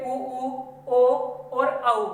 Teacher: ठीक, तो हमारे जो व्रतमुखी और वर्तुल हैं, ये उ, ओ और औ हो जाते हैं। बोलकर देख लो, होठों का आकार जो है गोलाकार होगा।